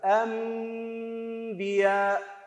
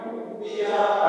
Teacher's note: ناخذ مثال، مر المثال مالتنا في كلمة واحدة، أنبياء، أنبياء، النون ساكنة نقول هكذا أنبياء، قلوها بغلق الشفتين تماما وإطالة الغنة مقدار حركتين، رفع الأصبع وخفضه بصورة اعتيادية، أنبياء، قلوها أنبياء، أحسنتم. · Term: الإقلاب